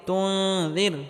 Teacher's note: নুন সাকিনের পরে ইকফার হরফ জাল আসার কারণে এখানে ইকফা গুন্নাহ করে পড়তে হবে।